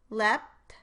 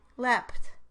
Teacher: I call the P unreleased because I changed the position of my articulators to the position for the T before the stop is released. Here is what the word sounds like with an unreleased versus a released P. Leapt, unreleased P.